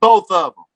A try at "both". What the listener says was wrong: Not both. Not TH. Both. With an F. With an F. Both. Both of them.